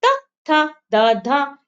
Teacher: त वर्ग त थ द त ध क्या हुआ हमारे दांतों को टच किया